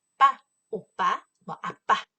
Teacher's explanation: 이 발음할 때 우리 눈에 보이진 않지만 이 안에 성대가 잔뜩 긴장하고 있다가 한 번에 소리가 땅 터지는 걸 말해요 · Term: 긴장성